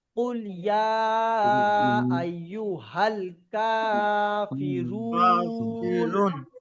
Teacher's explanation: আর এই রুন এখানে তিন আলিফ টেনে পড়তে হবে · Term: মদ্দে আরজি ওয়াকফি